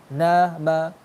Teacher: ketika ditanyakan suaranya keluar dari mana, maka keluar dari mulut sama hidung · Berarti ketika baca huruf nun sama mim, dia suara yang keluar dari mulut yang sesuai makhrajnya, nun dari ujung lidah sama langit-langit atas, mim kedua bibir, tapi kedua huruf itu punya sifat gunnah.